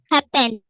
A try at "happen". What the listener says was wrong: happen, happened না, ইডি হবে না তো, happen.